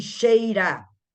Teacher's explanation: antes dele é que tem que ser forte então ele é ditongo decrescente que veio forte depois veio fraquinho